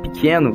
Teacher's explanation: a consoante oclusiva velar que tem uma articulação em que a língua sobe para a região velar da boca o que faz com que a vogal fique alta